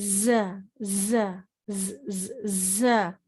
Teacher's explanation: ٹھیک ہے، اب یہ ہے ز، ز، اسے ز نہیں پڑھنا، اسے پڑھنا ہے ز ز ز. جو سختی سی آواز آتی ہے، سٹی جیسی بزنگ ساؤنڈ جو ہے وہ اس میں پایا جاتا ہے